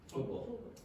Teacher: Football. Yeah, you stop the air coming out and you produce what is called a glottal stop